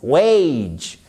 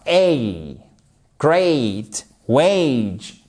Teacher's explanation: C'est le même, voyez le A, vous le prononcez comme le E et le A de great. Et c'est une diphtongue.